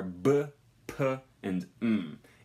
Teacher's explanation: the lips are together which is causing an obstruction to the airflow